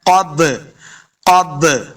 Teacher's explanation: یہ جو آپ کو با کی آواز ڈبل آ رہی ہے اسی کو قلقلہ کہتے ہیں. تو ہم نے اس کو خوب واضح کرنا ہے.